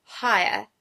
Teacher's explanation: It's made up of the sounds in I as well as kind of an a sound, also called a schwa, on the end. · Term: triphthongs